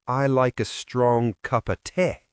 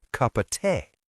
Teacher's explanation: He says, I like a strong cup of tea, dropping the of sound